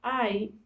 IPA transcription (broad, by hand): aɪ